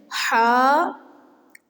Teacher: حلق کے درمیانی حصے سے ہی ہا بھی ادا ہوتا ہے · حلق کے درمیانی حصے سے عین ادا ہوتا ہے